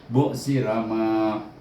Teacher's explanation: jangan ra panjang, ma saja yang perlu baca dua harakah. Bu sirama.